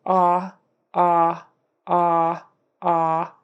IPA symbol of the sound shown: ɑ